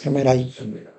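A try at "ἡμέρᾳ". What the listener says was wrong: gemera. Cuando tiene la iota suscrita no se pronuncia. Gemera. Pronunciamos igual. El nominativo con el dativo lo pronunciamos igual, solo que uno tiene la iota suscrita.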